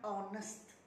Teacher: Sebutannya oh, bukan ho.